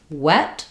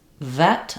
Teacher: when I'm saying wet, I'm using just my lips. Vet, I'm using my teeth and my lips.